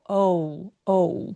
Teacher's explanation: 7대 3의 비율 정도로 첫 번째 소리가 좀 잘 들리고 두 번째 소리가 한 30% 정도로 좀 들려와야 됩니다. 그래서 없어지면 안 되고 어우 어우 영어의 그 기준에서 이중 모음이 없는데 요렇게 두 개의 모음 소리가 연결되게 연속되게 나오는 걸 이중 모음이라고 합니다.